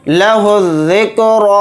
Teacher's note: रा के ऊपर खड़ा ज़बर है तो रा को थोड़ा खींच कर पढ़ेंगे